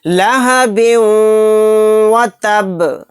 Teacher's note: با کو واو میں ملاتے ہوئے غنے کے ساتھ پڑھنا ہے۔ لہب و تب، یہاں پر دیکھیے با ساکن ہو کر پڑھا جائے گا کیونکہ آیت ہو رہی ہے، جب با ساکن ہوگا تو با کے اندر قلقلہ بھی ہوگا۔ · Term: ادغام غنہ